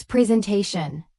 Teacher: Native speakers use a z sound in the middle, not an s sound.